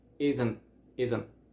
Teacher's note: we don't say actually the T at the end we kind of like hold the sound